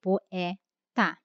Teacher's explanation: poeta, o E é pronunciado, né, com uma vogal aberta